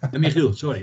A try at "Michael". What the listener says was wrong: Michael, het is Michael, niet Michiel.